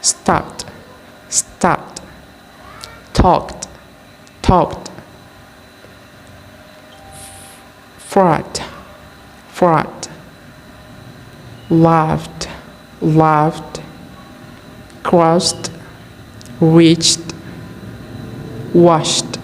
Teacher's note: consonant sound T for verb ending in voiceless sound